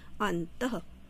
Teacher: इसका जब हम उच्चारण करते हैं तो इसका उच्चारण ह की तरह होता है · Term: विसर्ग